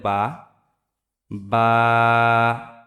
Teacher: তারপর আসি বা দুই ঠোটের যে ভিজা অংশ সেই ভিজা অংশ থেকে উচ্চারিত হবে